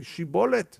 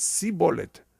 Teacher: The sh, they couldn't say sh. They said s.